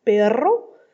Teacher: la prononciation du R en espagnol, qui doit être roulé, soit roulé simple, comme dans perro, soit roulé double, comme dans perro.